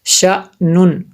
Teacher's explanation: حمزہ ساکنہ کو جھٹکا دے کر پڑھیں گے، اس لیے میں یہاں پہ اس کو جھٹکا دے کے پڑھ رہا ہوں جی